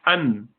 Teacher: For example, when you say an, so the tip of the tongue strikes the top of the mouth, roof of the mouth, and you say an. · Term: noon